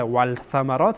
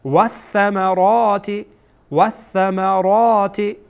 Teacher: ول ثمرات اشتباهه چون ثا از حروف شمسیه هست، یعنی که واو مستقیم یعنی لام هیچی میشه، لام تلفظ نمیشه، مثل که در زبان انگلیسی میگن سایلنت این حرف، گویا در اینجا یعنی این حرف کاربرد نداره.